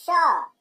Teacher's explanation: तालव्य श को तालु से इसका उच्चारण होता है श